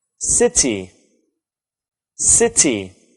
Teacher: Do you know where the stress is? It's on the first syllable.